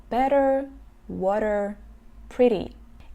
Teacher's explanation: кончик языка как будто бы отталкивается от верхних десен и делает это очень-очень быстро и в итоге получается такой достаточно звонкий и быстрый звук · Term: flap T